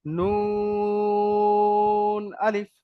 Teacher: নুনে 3 আলিফ টান, আর আলিফে একদম টানা যাবে না।